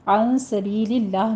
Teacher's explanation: عن سبیل اللہ میں نون ساکن کا قاعدہ اخفا کی کریں گے، سبی میں یا مدہ ہے، آگے لفظ جلالہ باریک پڑھا جائے گا۔